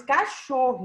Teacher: então a sílaba tônica é a penúltima